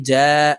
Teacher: খালি আলিফ মদের হরফ তাই এই জিমকে এক আলিফ টেনে পড়বো